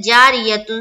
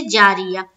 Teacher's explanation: गोल ता पर वक्फ करना हो तो हाय साकीना बन जाती है, जैसे जारियतुन से जारिया।